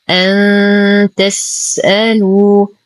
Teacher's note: نعطي السين الهمسة والرخاء والصفير. نتم ضمة اللام بعدها واو ساكنة فهو الطبيعي بمقدار حركتين.